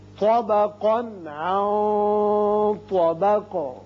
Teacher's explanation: تو کو پر پڑھیں گے تو، اور قوف کو بھی پر پڑھیں گے، لیکن اس کی جو تنوین کا نون ہے اس کا اظہار ہوگا آگے، چونکہ عین حروف حلقی میں سے آ گیا. اس نون پر اخفا کریں گے اور آگے طا حروف مستعلیہ میں سے ہے، لہذا اخفا کی آواز ذرا پر کر کے ادا کی جائے گی اور قاف ساکن کر دیں گے.